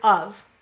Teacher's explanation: it's a schwa, and of is an unstressed word, so it is one of those lazy vowels. But the F saying v, that is an exception.